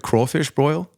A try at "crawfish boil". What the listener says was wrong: Drop the R. It's a boil. Boil. No broil. You said broil. He said broil.